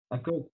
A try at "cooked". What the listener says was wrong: Cooked. Cooked. Cooked. Es como si pronuncia la cook, pero terminaría en una T, ¿de acuerdo? Cooked. Cooked.